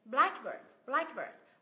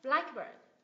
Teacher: két thì nó là một danh từ ghép đấy blackbird blackbird mình nhấn vào âm tiết thứ nhất